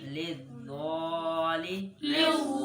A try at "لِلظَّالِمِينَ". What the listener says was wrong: वा मोटा नहीं पढ़ रहे हो फिर